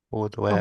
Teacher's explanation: it's a glottal after the E